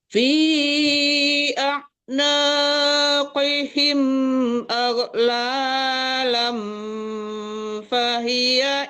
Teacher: Ya, aghlalan itu disamarkan ke fa ya Bu, jangan aghlalan ya, tapi lang itu dengung soalnya ya, hukumnya ikhfa hakiki jadi disamarkan ke fa